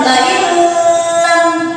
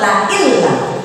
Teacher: Jadi huruf nunnya ya melebur kepada huruf lam dan ingat tanpa dengung. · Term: idgham bila gunnah